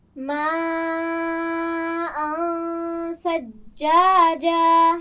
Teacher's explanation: ثجاجا جیم پر شد ہے، سختی سے ادا کیجئے